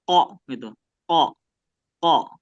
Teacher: Kalau Q dia menyentuh ya menyentuh bagian lembutnya. E bagian lembut ya. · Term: qof, qaf